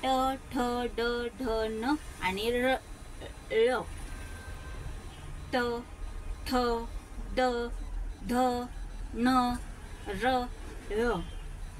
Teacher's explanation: जीभ दुमडून टाळूवर स्पर्श होऊन उच्चार होणारा व्यंजन जीभ आपली फोल्ड होते वरच्या साईडने आणि ती टाळूला स्पर्श करून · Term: मृधन्य व्यंजन